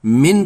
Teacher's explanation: من کے ساکن نون کے بعد قاف حرف اخفا ہے، اس ساکن نون پر اخفا کریں گے، ناک کے بانسے سے 2 حرکات لمبا، زبان نون کے مخرج سے تھوڑا پیچھے رکھ کر ہونٹ کھلے رکھنے ہیں